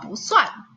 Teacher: kata pu, kalau misalnya diikuti dengan suku kata nada keempat, maka nada keempat ini, kata pu ini akan berubah menjadi nada kedua. Jadi bacanya adalah pusuan.